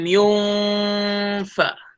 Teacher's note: Mesti kena baca dengan dengung yang tidak menyebut huruf N ataupun samar-samar namanya. Yunfa. Nak masuk huruf fa, nak masuk sebut huruf F tu.